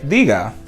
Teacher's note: two syllables, the stress is on the first syllable